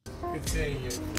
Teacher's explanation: the intonation Falls after the final stressed syllable that's a falling intonation and expresses confidence and certainty notice that all the words in this phrase are linked together